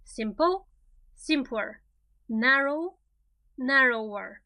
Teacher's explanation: pay attention to the stress. It's always on the first syllable.